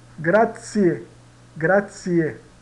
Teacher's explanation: Então, nós tínhamos o zi mais uma vogal. Então, na pronúncia vai ser o tsi mais a vogal.